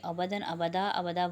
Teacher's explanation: ابدا وقف ہوگا تو 1 الف کی مقدار کھینچیں گے کیونکہ 2 زبر کی تنوین 1 زبر میں بدل جائے گی اور الف مدہ کے برابر 1 الف کی مقدار کھینچا جائے گا۔